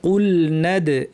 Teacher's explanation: ওয়া ইদ কুলনাদ, এখানে নুনের পর আলিফ আছে, এরপর যে হামজাটা আছে সেটা হচ্ছে হামজাতুল ওয়াসল, যেটা মিলিয়ে পড়লে থাকে না, পড়ে যায়, সেই জন্য নুন গিয়ে সরাসরি দালকে ধরবে, এখানে আলিফের টানটা হবে না